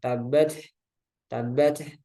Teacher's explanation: Setelah ditahan, ditekan atau tabat, dilepas saja. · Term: hams